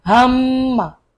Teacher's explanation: হা মিম জবর হাম, মিম জবর মা, হাম্মা। মিমের উপর তাসদীদ গুণনা করা ওয়াজিব, আর গুণনাটা করতে হবে নাকের ভিতর থেকে।